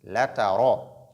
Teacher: la lettre ra, lorsqu'elle porte fatha, elle est emphatique, il y a mufakhama.